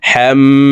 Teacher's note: হা মিম জবর হাম, 3 সেকেন্ড পরিমাণ এই হা তাসদিদওয়ালা মিমের সাথে গুন্নাহ করে ধরে রাখবো